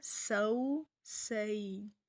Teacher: سین کو ہم سیٹی کے ساتھ ادا کریں گے